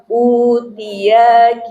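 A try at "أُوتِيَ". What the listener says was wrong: Ya-nya jangan panjang. Utiya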